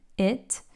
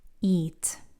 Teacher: if we're using a short vowel, it means one thing, but if I lengthen that vowel, it turns into eat